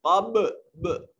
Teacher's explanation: اور قب با ساکن ہے، یہاں قلقلہ واجب ہوگا. آواز اپنے مخرج پر لگ کر ٹکرا کر واپس پلٹے گی